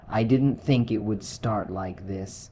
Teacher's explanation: you can hear the natural pause after think. It's not robotic, it's human, and that pause, that tiny break in rhythm, says just as much as the words themselves.